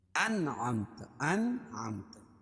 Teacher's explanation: نون ساکن کے بعد حروف حلقی کے 6 حرفوں میں سے عین ہے اس کو ظاہر کر کے پڑھیں گے بلا غنہ کے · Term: اظہار حلقی